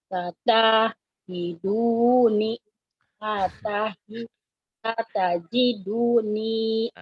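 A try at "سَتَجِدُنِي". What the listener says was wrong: Gitu nggak boleh diputus. Sambungin. Satajiduni gitu Bu.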